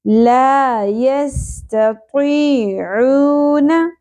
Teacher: طی عو, یہاں پر بھی واو حرف مدہ ہے, ایک الف کے برابر کھینچنا ہے. نون کی زبر زیادہ نہیں کھینچنی